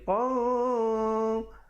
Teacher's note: Baca qaf tanwin 2 di atas, asalnya bunyi qan, tapi bila datang qaf jadi hukum ikhfa, jadi qan. Jadi ikhfa kita naikkan sedikit sebab qaf sifatnya isti'la.